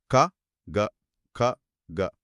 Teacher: గ అన్నప్పుడు గొంతులో ఒక చిన్న మోటార్ నడుస్తున్నట్టుగా వైబ్రేషన్ మొదలవుతుంది. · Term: నాదములు